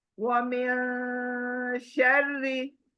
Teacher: یہاں دوسرا رول نہیں بلکہ اکفا رول آیا ہے، وَمِن شَرِّ، نون ناک کے اندر چھپانا ہے